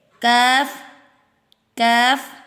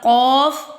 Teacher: ہم کیف پڑھیں گے، باریک والا، یہ موٹا ہوتا ہے قاف